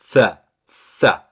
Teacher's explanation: Et donc la lettre tha, on avait dit, on va poser le bout de sa langue entre les dents du haut et les dents du bas. Et on va pousser un son T.